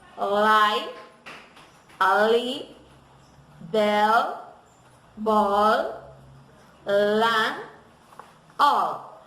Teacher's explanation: The symbol is alveolar and palatal because the articulation is mainly touching the alveoli with the tongue